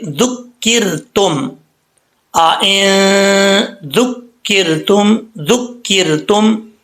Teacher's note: اب اس کو ذکرتم نہیں پڑھنا، زال کے بعد کاف جو ہے، کاف کے اوپر شد ہے، زال پیش، کاف ذک، کاف زیر را کر، ذکرتم، یہاں پر را ساکن سے پہلے زیر ہے تو را بریک پڑھا جائے گا. را ساکن سے پہلے زیر ہو تو را بریک پڑھا جاتا ہے.